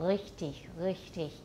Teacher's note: It's probably a little further back than velar, but not all the way to uvular. · So what is a uvular trill? It says they use a sound made with the back of the tongue near the uvula for the sound of R